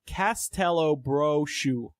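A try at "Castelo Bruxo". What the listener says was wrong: I think Brushu. I think it's brew because there's 2 O's.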